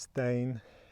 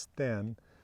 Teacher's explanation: the Old West Norse diphthong ei, the Old East Norse monophthong e